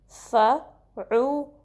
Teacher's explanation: عین کو درمیانے حلقے حصے سے ادا کرنا ہے